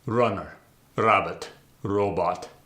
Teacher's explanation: We'll start with the tapped R. It's not a full R roll. Now to practice it, when you're going to say the R, act like you're about to say a word that starts with a D, but don't actually say the D sound.